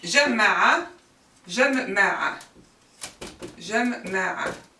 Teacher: we have a gemination in the middle radical. It means we have a double mim.